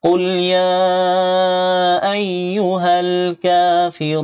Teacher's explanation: কাতে এক আলিফ টান হবে, আর রুনে তিন আলিফ টান। পেশের পরে জজমুল ওয়াও মদের হরফের পরে নুনের ওয়াকফ হয়েছে, এই জন্য তিন আলিফ টানতে হবে।